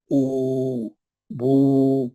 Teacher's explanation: पेश पढ़ते वक्त में होंठ गोल रहना